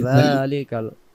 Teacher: জাল অক্ষরে জিহ্বার আগা থেকে নরম করে পড়তে হয়